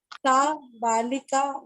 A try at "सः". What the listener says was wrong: सह, सह विसर्ग बोलिए।